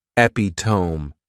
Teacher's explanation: this noun has four syllables and the stress is on that second syllable